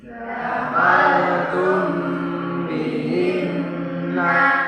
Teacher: dibaca ikhfa syafawi karena mim mati bertemu dengan ba, yaitu panjangnya 1 alif atau 2 ketukan